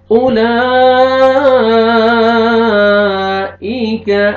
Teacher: حمزہ پڑھیں گے, کاف کو باریک پڑھیں گے